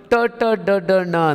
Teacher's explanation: ನಾಲಿಗೆಯ ತುದಿಯನ್ನು ಮಡಚಿ ಅದನ್ನ ಮೇಲೆ ಅಂಗಳದ ತುದಿಗೆ ಬಡಿತೀವಿ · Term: ಮೂರ್ಧಾನ್ಯ ಅಕ್ಷರಗಳು